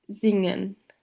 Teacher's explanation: the velar nasal n is found in singen